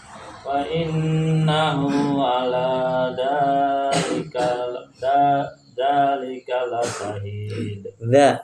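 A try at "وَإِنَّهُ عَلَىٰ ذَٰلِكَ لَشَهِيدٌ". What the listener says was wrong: Ujung lidah dan ujung gigi ala dzalika lasyahid. Pakai sya, la syahid.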